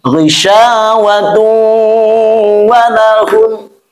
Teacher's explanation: masukkan kepada huruf waw, lalu kita gunnahkan, kita tahan atau kita tekan bunyinya. Maka menjadi contohnya ghisyawatun walahum. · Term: idgham